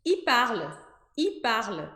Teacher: É como se fosse um I comprido, porque não dá tempo da língua pronunciar corretamente o L.